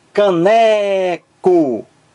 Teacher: o acento tônico está então na sílaba ne